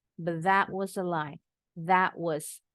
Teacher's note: kalau bacanya cepat nih ya penutur asli Bahasa Inggris that bunyi tnya gak pernah jelas that ini juga sama t-nya ada dibikin jadi satu bunyinya nih